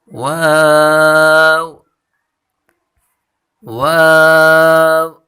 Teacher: ایک دفعہ پھر اس کو پڑھیں، نون واو واو۔ واو کی مخرج دونوں ہونٹوں کو گول کرنے سے ہے، واو کی مخرج ہے دونوں ہونٹوں کو گول کریں۔